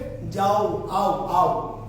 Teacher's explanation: অর্থাৎ আকার আর ও দুটো একসাথে উচ্চারিত হয়। তাহলে দুটি স্বরধ্বনি যদি একসাথে উচ্চারিত হয়, দুটি স্বরধ্বনি যদি একসাথে কি উচ্চারিত হয়, তাকে বলা হয় যৌগিক স্বরধ্বনি।